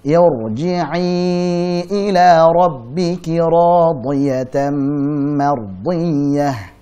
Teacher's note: Yarji'i dibaca tebal. Kenapa? Karena ra sukun sebelumnya hamzah wasal.